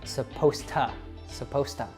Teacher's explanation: And because that last one, supposed, turned into a T sound, supposed, we have 2 T sounds there, and usually when that happens, we'll take one of them out. So it becomes supposed to, supposed to.